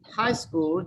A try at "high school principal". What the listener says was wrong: you put together high school. There's no pause between these two words. It's high school principal. High school principal.